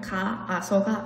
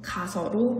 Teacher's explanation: 가의 아와 아서의 아가 같은 소리가 나기 때문에 두 소리 중 하나를 탈락시켜주는 것입니다. 그래서 발음을 가아서가 아닌 가서로 발음하는 것이 맞습니다. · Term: 동음 탈락